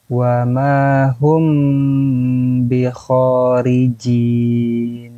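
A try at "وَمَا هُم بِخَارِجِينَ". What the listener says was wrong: Oke, untuk yang ketika perpindahan hum, jangan antum naberkan ya. Jangan antum hentak ya. Cukup di perpindahan saja. Wa ma hum. Jadi jangan wa ma hum. Ya, jangan terlalu ditekan. Wa ma hum bi kharijin.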